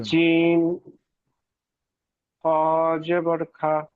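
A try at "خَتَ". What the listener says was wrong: এটা, হ্যাঁ, আপনি জিম বলছিলেন, এটা খ না? জি, পড়েছেন ঠিক, কিন্তু মুখে বলছিলেন একটু, ওটা হয়ে যায় স্লিপ।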